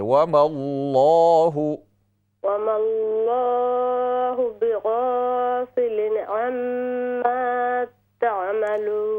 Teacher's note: وما اللہ، لام کو موٹا کر کے